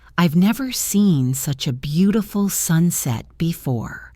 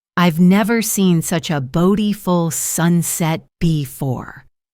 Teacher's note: My voice went up on never and beautiful and sunset and it went down at the very end on before. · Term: natural music of English